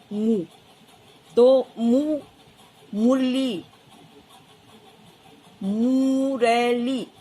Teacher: तो जैसे ऊ की आकृति होती है, ऐसे हमारे होठों की आकृति बोलने की कोशिश करती है, मुंह। बाहर की तरफ होठ हमारे बढ़ते हैं, मुंह। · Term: छोटी ऊ की मात्रा